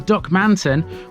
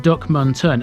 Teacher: There's no emphasis on any of the syllables, so rather than Duckmanton with the emphasis on the A, it's actually pronounced Duckmunton, and this was how I pronounced it in the Staveley video.